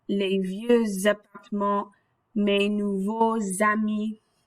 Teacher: When we use beau, nouveau, and vieux that end with the X, when they come before a word beginning in a vowel or silent H, that X has that liaison to make that Z sound